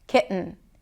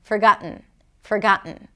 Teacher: Ki, glottal stop, and then an N